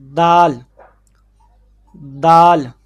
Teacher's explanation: دال کا مخرج زبان کی نوک اوپر والے دونوں دانتوں کی جڑوں کے ساتھ